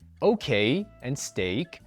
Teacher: Okay and steak blend the vowels E and I, but none of this blending happens in French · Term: diphthong